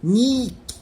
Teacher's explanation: Tem esse Y embutido. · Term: som da semivowel